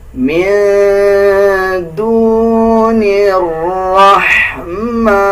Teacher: نون کو اس را کے ساتھ ایڈ کریں گے. را سے پہلے جو الف اور لام ہے اس کو ہم سکپ کر دیں گے